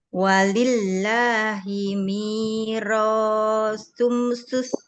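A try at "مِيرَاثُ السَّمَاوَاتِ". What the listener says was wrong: Kalau yang ini langsung masuk ke sinnya aja, Ibu. Hamzah Wasol ya, nggak usah dibaca. Mirasus samawati wal ard.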